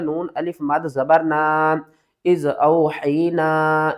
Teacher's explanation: اس کو ہم نے 3 الف کی مقدار کھینچ کر پڑھنا ہے